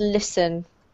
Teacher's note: This is really a silent T, so it's pronounced listen.